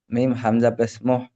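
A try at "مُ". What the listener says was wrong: হাটকা হবে মু, মিম হামজা পেশ মু, হাটকা হবে। মুহ ওই হার মতো উচ্চারণ হয়ে যাচ্ছে। মু উ, মু উ।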